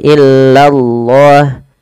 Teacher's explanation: Kemudian nih di lafal Allah bila didahului dengan fathah atau dhammah dia harus ditebalkan lafal Allahnya. Illallah, lanya tapi tipis, tidak boleh tebal.